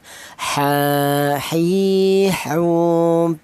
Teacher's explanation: huruf berasal dari tengah tenggorokan ya. Di mana tenggorokan itu bagian tengah ditempat dua huruf yaitu huruf ha dan huruf ain ini ya.